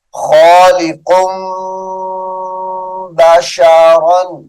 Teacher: تنوین کے بعد حرف با آ رہا ہے، یعنی اقلاب کا قاعدہ ہے، تو تنوین کو میم سے بدلیں گے